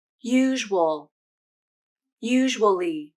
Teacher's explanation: when the syllable count goes down, a w consonant is inserted at the beginning of the second syllable.